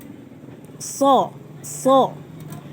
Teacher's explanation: Ketika membaca so, bibirnya sedikit dibulatkan